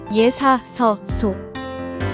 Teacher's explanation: 예사서 소. 씨옷은 치경음으로 혀와 잇몸 사이에서 나는 소리입니다